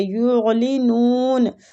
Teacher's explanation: الف مد کی وجہ سے کھینچیں گے، یعلنون عین جو ہے عین کا مخرج حلق سے ہوتا ہے تو حلق میں لے کے جائیں گے عین کی وجہ سے